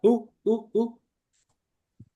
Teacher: se elimina la o se pronuncia básicamente la u que es más larga